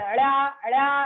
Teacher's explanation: కింది భాగం కూడా టచ్ అవుతుంది, పై మూర్ధకి కింది భాగం కూడా టచ్ అవుతుంది